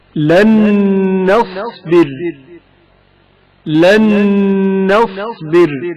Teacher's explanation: وقف کے وقت را ساکن ہو جائے گا اور ترقیق کے ساتھ پڑھا جائے گا